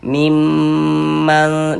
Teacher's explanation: Jadi suara itu kita tahan, kita panjangkan sejenak. Mimman, di bagian mimnya itu kita tahan, kita panjangkan sejenak. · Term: ghunah musyaddadah, gunnah musyaddadah